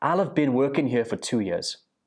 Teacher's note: So here, I will have been gets connected and it becomes I'll have been.